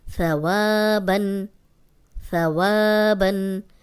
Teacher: وا کو لمبا کریں گے کیونکہ الف مدہ ہے